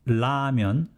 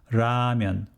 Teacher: some people pronounce as lamyon with l another group of people pronounce it as ramyan with a soft r but nobody actually pronounced as true r sound with ramyun nobody